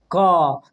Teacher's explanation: क बोलिएगा तो कंठ पर कंपन करेगा · क का उच्चारण स्थान कंठ से होता है